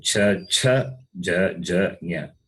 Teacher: They are palatals. The sound comes from the palate.